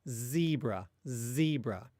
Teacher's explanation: if you say a Z at the beginning of a word in English, like in zebra, you can continually exhale the air. Again, like zebra, zebra.